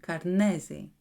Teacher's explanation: The word Karnezi has 3 syllables of similar length, but the syllable ne receives a tonal stress that makes it more prominent without significantly changing its duration. This combination of equal timing with added stress on certain syllables is what gives Greek its distinctive rhythm and can sound shouty to English speakers who are used to reducing unstressed syllables.